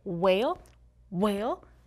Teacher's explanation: if you say like the word whale, whale, you feel a puff of air into your palm. And that's how you can tell if it's a WH or just a W.